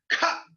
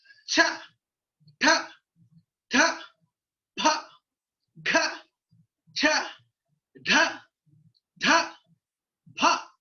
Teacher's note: ఉచ్చారణ సందర్భంలో అధిక పరిమాణంలో వాయువు బయటికి వెళ్ళినప్పుడు పుట్టేటువంటి ధ్వనులు మహా ప్రాణాలు